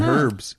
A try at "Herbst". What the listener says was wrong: Herbst. With a T at the end. Like Herb Street, but all one word.